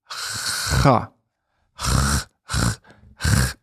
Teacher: It's just a little bit above in the throat, the back of the throat here.